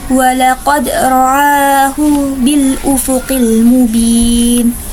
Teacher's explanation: ro tafhim karena berharokat fathah, maka dibaca dengan tebal. Sedangkan a yaitu mad badal karena fathah berdiri di atasnya alif.